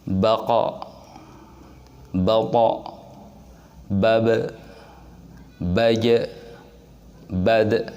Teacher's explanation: 5 huruf ini ketika kita membaca dalam kondisi saknah akan terasa ada pantulan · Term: qalqalah